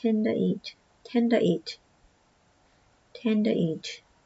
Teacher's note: The D and T blend a little.